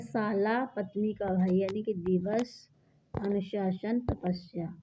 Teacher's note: सा एक दंत व्यंजन है, इसे ऊष्म संघर्षी व्यंजन भी कहते हैं